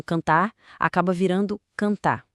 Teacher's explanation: E tem também a queda da letra R no final dos verbos